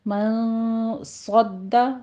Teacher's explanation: رہا ہے، دال کے اوپر تشدید ہے، سختی کیجئے، من صد، صاد کو پر پڑھتے ہوئے دال کے اوپر تشدید ادا کیجئے